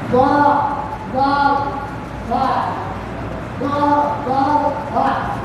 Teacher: জিহ্বার আগা উপরের দাঁতের আগার সঙ্গে লাগাইয়া